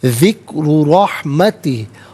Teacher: ذکر رحمتی، ذکرو میں را پر پیش ہے، را کو پر کر کے پڑھا جائے گا۔ رحمتی میں را پر زبر ہے، را کو پر کر کے پڑھیں گے۔